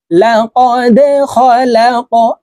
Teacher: এই দালকে ধাক্কা দিয়ে উচ্চারণ করতে হবে, কারণ দাল কলকলার হরফ